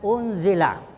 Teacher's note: unzila itu nun sukun ketemu zaid disebut ikhfa. Ya, jadi bacanya samar-samar ya